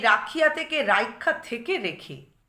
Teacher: এখানে দেখো সেই রাখিয়া থেকে রাইখা থেকে রেখে, তাহলে এই হর্ষইকারটা হচ্ছে অপিনিহিত হর্ষইকার। এই হর্ষইকারটা স্বরসঙ্গতি বা আভ্যন্তরীণ সন্ধির প্রভাবে কিসে রূপান্তরিত হচ্ছে না, একারে। এই যে রেখে ক্ষয়ের যে একারটা, সেটা হচ্ছে এই হর্ষইকারটাই রূপান্তরিত হয়েছে। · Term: অভিশ্রুতি